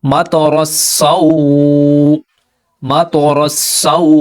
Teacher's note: یہ جو تو ہے اس کو ہم پر پڑھیں گے، یعنی موٹا پڑھنے کی کوشش کریں گے، کیونکہ تو جو ہے وہ ہیوی لیٹر ہے، مستعلیہ حروف میں سے ہے، تو اس کو ہم موٹا پڑھیں گے۔